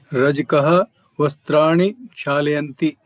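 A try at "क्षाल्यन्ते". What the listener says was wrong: Kshalyante. Layanti becomes liant. Kshalyante. Kshalyante. Lakara joins Kshalyante. Kshalyante.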